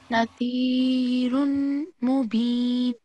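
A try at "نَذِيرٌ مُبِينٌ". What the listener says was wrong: Yeah, you will not say nazirun mubin. The run sound will not. This is that because there is a shadda on neem. This will directly go on to neem, merges with neem.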